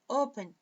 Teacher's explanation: Mas open, a força está no O. · Porque aqui não é uma sílaba tônica. A força está na primeira sílaba, não na segunda.